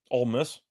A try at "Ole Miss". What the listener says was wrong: No D. She's getting a D. Were you saying the hard D?